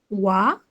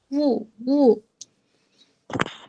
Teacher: ওয়াও বলতে গিয়ে দুই ঠোঁট কিন্তু একসাথে লেগে যায় না